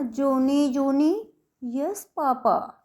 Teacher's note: यस पापा जब हमने धीरे बोला है ना, तो यहाँ पे हमारा स्ट्रेस कम लगा है, और जोनी जोनी के ऊपर हमारा स्ट्रेस ज़्यादा लगा है।